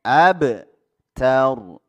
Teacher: Ra-nya juga harus ditebalkan ya karena didahului baris fathah.